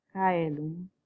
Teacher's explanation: en latín el sonido de la C, digamos, de la grafía C, era el sonido velar.